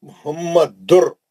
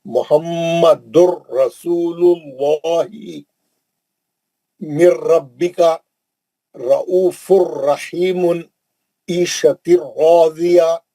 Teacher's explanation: नून गायब, नून इदगाम कर लिया, नून का आवाज नहीं निकलेगा, ये बिला गुन्ना है। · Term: इदगाम बिला गुन्ना